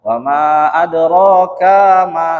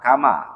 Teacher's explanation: ronya panjang 2 harokat, k-nya pendek. Seringkali orang itu bacanya dipanjangkan.